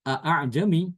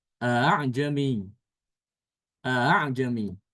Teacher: Jadi hamzah yang keduanya itu dibaca antara hamzah dengan alif ya. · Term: tashil